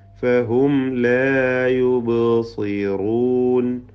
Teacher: ബൈന് ഖൽഖല സുഗ്ര നൽകി ശബ്ദം ചലിപ്പിക്കണം. യുബ്സി സ്വാദിന് കുറഞ്ഞ തഫ്ഹീം കൊടുത്തുകൊണ്ട് ഒതുക.